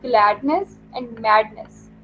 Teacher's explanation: The stressed syllables are glad and mad. जो इससे next जो सिलेबल है नेस, वो अनस्ट्रेस सिलेबल है.